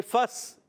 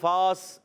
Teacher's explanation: فا کو ڈائریکٹ سین سے ملائیں گے، الف نہیں پڑھا جائے گا، ڈائریکٹ یہ الف حذف ہو گیا، فا سین سے مل جائے گا تو آواز آئے گی فس.